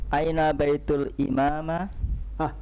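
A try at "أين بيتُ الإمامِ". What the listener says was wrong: Kok tiba-tiba jadi imamah? Di situ udah ada kasrah di situ.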